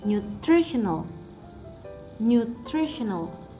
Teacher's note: the stress is located on the second syllable